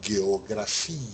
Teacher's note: pronuncia como esse G gutural nunca como J